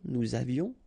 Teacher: final S not pronounced, and then little liaison